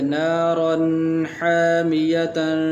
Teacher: تنوین کے بعد حروف حلقی میں سے حا آ گیا ہے، تو اس لیے یہاں پر غنہ نہیں کریں گے